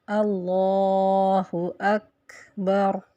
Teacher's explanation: کاف کو ہمس دیتے ہیں اور اس کی آواز کھا کی طرح آتی ہے، جیسے اللہ اکبر، تو یہاں کاف میں ہم نے ہمس دیا۔